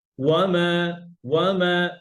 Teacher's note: একালিফ মাদগুলো দুই হারাকা, মানে টু কাউন্টস